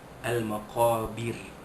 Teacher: Al-maqabir alif lam qamariyah, al-maqabir qaf alif di atas qa. Bir, jadi ra yang ujung ayat itu dibaca nipis.